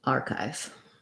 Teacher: We want long on the R and then short on the chive. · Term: first syllable stress